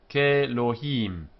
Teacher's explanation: The aleph is weak, loses its consonantal force, and these two combine to form the long E here.